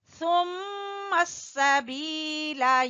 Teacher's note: میم مشدد کا غنہ کریں گے